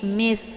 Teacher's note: Ada Sa sukun Jadi bukan Sya ya Jangan dibaca tapi Miss letak huruf sa ini adalah ujung lidah dengan ujung gigi seri bagian atas